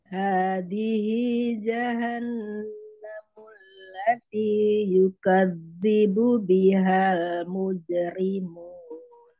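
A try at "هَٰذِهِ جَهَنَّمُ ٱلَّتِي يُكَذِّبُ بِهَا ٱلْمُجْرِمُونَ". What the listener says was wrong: Iya, mujerim. Tinggal nun tasjidnya. Jahannamul.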